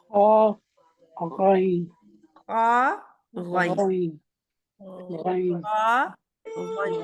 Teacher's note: حلق سے نکلتے ہیں یعنی کہ ہمارے گلے سے، اور خا اور غین جو ہیں وہ بالکل حلق کے آخری حصے سے. یہ دیکھیں ادھر سے زبان شروع ہو رہی ہے، یہ دیکھیں ادھر سے زبان ہے، اور یہ بالکل آخری، یہ سارا حلق ہے ہمارا، اور حلق کے آخری حصے سے یہ نکل رہے ہیں، یہ تالو آگے آ رہا ہے. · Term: حروف حلقی